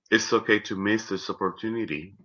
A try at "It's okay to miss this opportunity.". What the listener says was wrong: It's okay to miss this opportunity. That part, to me, I think sounds very flat and a little monotone. Okay, so I do want to play around with the pitches there.